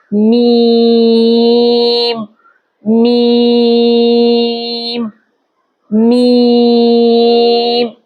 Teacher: حرف میم ہونٹوں کے خشک حصے اور ناک کے خشوم سے ادا ہوگا